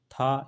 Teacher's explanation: यह अघोष है लेकिन महाप्राण है